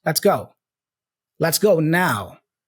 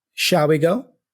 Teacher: we tend to use let's with more of a affirmative tone, not a question tone, affirmative tone, like, hey, let's go.